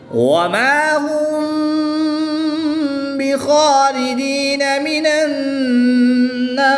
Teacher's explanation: میم ساکن کے بعد حرف با ہے تو یہاں پر اخفاء شفوی ہوگا، غنہ زمانی کر کے پڑھیں گے۔